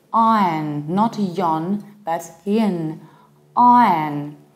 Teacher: But if you want to sound native-like, just skipping R is not enough. Saying ion will still make you sound foreign. You need to reduce the ending.